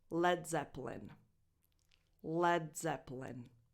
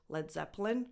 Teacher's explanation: That E between the P and the L is basically silent.